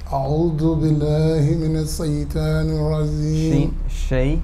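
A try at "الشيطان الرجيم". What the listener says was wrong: Shaytanir rajeem. More emphasis.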